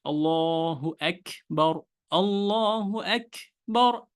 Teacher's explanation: অবস্থায় বাতাস বের হয় সেই দুইটা হলো কাফ আর তা সেজন্য কাফ তা যখন বাতাসটা বের হবে তখন কাফটা বাংলা বর্ণমালা খ এর মত চলে যাবে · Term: হামসের কাজ